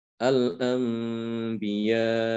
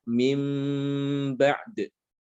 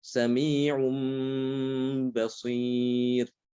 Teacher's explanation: Jadi nunnya diganti dengan mim. Habis itu didengungkan dan dibaca secara samar, ya, mimnya itu. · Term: iqlab